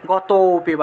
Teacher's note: ওতে গিয়ে টান দিতে হবে, ততে গিয়ে টান দিতে হবে, গত, ততে গিয়ে একটু টান দিলেই লুপ্ত অ এর উচ্চারণটা চলে আসে, গত পিবা। এই যে তো উচ্চারণ করলে একটা অটোমেটিকভাবে একটা লুপ্ত একটা অ উচ্চারণ আসে, গত, এই যে অ এর মতো একটা উচ্চারণ আসে, এটাকে বলা হয় লুপ্ত অ।